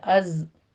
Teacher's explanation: کا قاعدہ اظہار شفی کریں گے، از کا میں زائی کی آواز سیٹی کی لے کر آئیں گے، اس پر قلقلہ نہیں کرنا